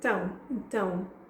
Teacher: notice I didn't quite pronounce it então, I said tão